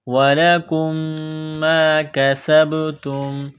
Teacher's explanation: میم مشدد ہے، غنہ کریں گے